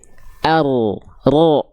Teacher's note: Ujung lidahnya dia nggak betul-betul nempel. Dia ada celah sedikit kan? · huruf ro itu dilafalkan bukan dari ujungnya banget, tapi dia dari bagian punggung lidah. Jadi kalau kita lihat begini, dia nggak nempel begini, tapi dia begini, seret.